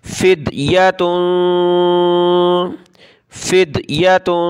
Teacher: یہاں تنوین پہ اخفا کریں گے، ناک میں آواز پیدا کریں گے